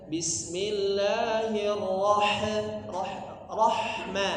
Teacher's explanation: Roh itu sudah benar dialirkan, tapi ujungnya jangan ditambahin e.